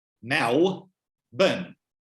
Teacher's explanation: I don't pronounce L's at the end of a syllable. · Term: non-lambdic